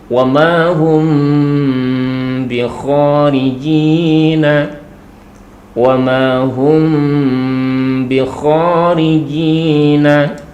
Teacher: dengan huruf ba maka di sini mim sukunnya di sini adalah dibaca dengan samar disertai dengan dengung kemudian tidak sampai terkatup untuk bibir kita jadi ada rongga ada furjanya bukan jadi belum sampai mengatup rongga di antara dua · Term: Ikhfa Syafawi